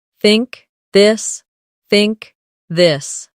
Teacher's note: In words like think or this. The tongue comes gently between the teeth. For think it's soft. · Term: th sound